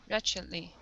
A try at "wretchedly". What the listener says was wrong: Good. All right. Nice job.